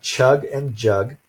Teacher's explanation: the sh, j, ch, and j sounds in English are all made at what's called the post-alveolar place of articulation